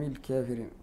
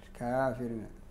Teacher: هو الفتح المتوسط ليس الفتح الكبير، هذا لا يوجد إلا في لغة العجم